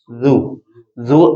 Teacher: زو زال کو نرم پڑھتے ہیں، زو۔ زبان اوپر والے دانتوں کے ساتھ اندر کے حصے میں لگتی ہے